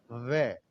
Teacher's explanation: दांत और होठ का मिलन हो रहा है तो दंतोष्ठ, दंत औष्ठ। दांत और होठ का मिलन हो रहा है इसलिए दंतोष्ठ है।